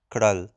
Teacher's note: the sound of kral is with a retroflex r it's a r sound and the eyes is like a schwa